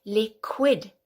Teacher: that QI gives you that qu sound, which is a C and a W together